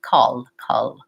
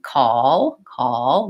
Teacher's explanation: people will simply just use the light L or the front L in both positions